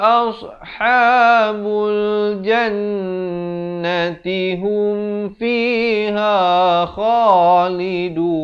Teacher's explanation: Kalau nak wasal jadi ulaika ashabul jannati hum fiha khalidun. Hum itu izhar syafawi, sempurnakan terus masuk fiha, fi 2 harakat, ha 2 harakat.